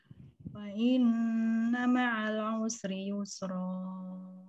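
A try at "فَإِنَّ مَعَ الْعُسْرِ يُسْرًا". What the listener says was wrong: Jelaskan lamnya, jangan fa inna ma'al usri. Fa inna ma'al usri, ma'al usri, jangan ma'al usri. Jelaskan. Inna ma'al usri. Hati-hati, hurufnya harus duduk.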